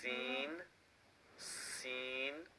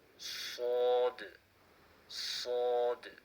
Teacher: the seen is flat and clear, where the sod is full mouth with a whistle sound